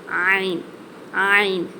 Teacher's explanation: இந்த எழுத்து நடு தொண்டையிலிருந்து வெளியாகணும்.